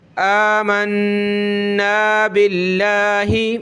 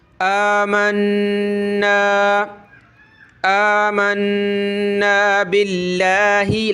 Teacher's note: یہ حمزہ کھڑا زبر آ کھینچیں گے اور نون پہ ہم نے غنہ کرنا ہے